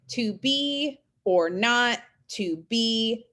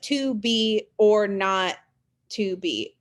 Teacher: those are iambs because you have unstressed stress